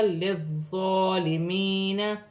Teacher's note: یا ساکن سے پہلے زیر ہے، یا مدہ بنے گی، ایک الف کی مقدار کھینچ کر پڑھا جائے گا.